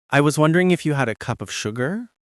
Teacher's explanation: We use uptalk or raising the pitch at the end of a statement, or softeners to sound less demanding.